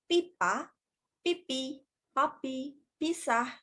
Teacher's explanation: Yang pertama, saya akan menjelaskan mengenai konsonan bibir atau kita bisa sebut sebagai bilabial hambat. Nah, proses bunyi tersebut dikeluarkan dengan menggunakan bibir atas dan bibir bawah. Contoh konsonan tersebut adalah seperti pada huruf P.